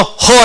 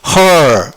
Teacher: 자, 반모음 R이 영어에서는 완전 묵음입니다. 그러니까 모음 다음에 R이 영국식에서는 어떻다고요? 완전 묵음. 아예 발음을 안 해버려. 그러니까 하고 끝나버리는 거지. · 근데 R을 두게 되면은 어떻게 되냐면 그 혀가 중간에 이렇게 떠 있지 않고 감겨서 올라오는 거예요. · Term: 영국식 발음, 세미사일런 R